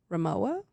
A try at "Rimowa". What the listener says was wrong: No, there's an O in there.